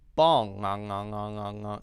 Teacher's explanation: If you want to make that sound, it's in the back of your throat, not na, but in the back, you lift up the back of your tongue. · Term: ng sound